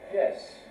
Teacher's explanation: high falling tone, as in yes in English